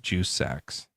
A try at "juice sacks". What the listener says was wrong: Just make sure you put a real separation between juice and sacks. Yeah, it keeps on sounding like you're saying Jew sack. Yeah, make sure you really hit the juice.